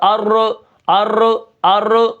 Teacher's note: रा में तकरार ना हो